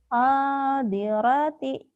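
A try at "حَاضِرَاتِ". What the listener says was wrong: rohnya panjang. Hadirati.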